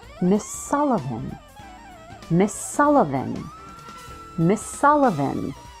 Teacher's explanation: I connect the final s in Miss to the S at the beginning of the word Sullivan so it feels like one word